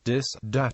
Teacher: voice th as in that is usually replaced by D sound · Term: French Acadian accent